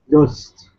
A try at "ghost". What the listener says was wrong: Very good. Excellent.